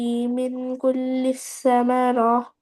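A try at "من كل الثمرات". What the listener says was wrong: ثمرات. تین نہیں ہے، سائی ہے، لیکن ثمرہ نہیں، ثمرات تا ساکن ہو جائے گا وقف میں۔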